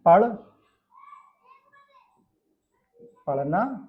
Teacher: जीभ अचानक से ऊपर उठती है और फिर फटाक से नीचे गिरती है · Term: उत्क्षिप्त व्यंजन